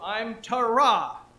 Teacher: you put the emphasis on the back the last syllable